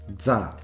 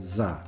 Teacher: Back in the good old days when I was learning Japanese at university, I was well aware of the fact that these syllables in Japanese were sometimes pronounced with an affricate instead of a fricative, which is to say as za instead of za.